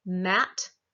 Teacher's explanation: the bilabial where i put my lips together